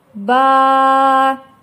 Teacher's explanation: Алиф, я, вау тамгалары аракетсиз келген учурда өзүнөн мурдагы тамганы созот. Алиф өзүнөн мурда фатха келсе, фатханы созот. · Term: созулма үндүүлөр